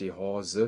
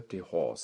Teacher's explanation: im Plattdeutschen fehlt das Schwa am Ende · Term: Endschwas verschwinden